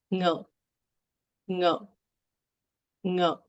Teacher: the NG sound is the pre-nasalization sound in this word